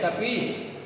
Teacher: वहाँ पर दो ई है, दोनों में ह्रस्व और दीर्घ ई, दोनों का एक तरह से संधि हो गया है, दोनों मिल गए हैं।